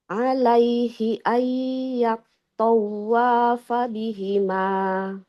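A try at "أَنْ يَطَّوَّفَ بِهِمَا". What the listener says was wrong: Enggak ayat tawa, wanya enggak panjang. Fala junaha alaihi ayyat tawafa bihima.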